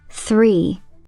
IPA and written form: θriː (three)